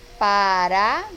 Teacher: O A aqui sendo a sílaba mais forte, acompanhado de uma semivogal U e outra semivogal I. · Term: tritongo